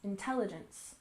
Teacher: And the stress in the second syllable for intelligence, intelligence.